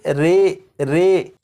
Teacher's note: امالہ کی راء کو اردو کے لفظ قطرے کی راء کی طرح پڑھیں گے، یعنی ری نہیں بلکہ رے پڑھیں گے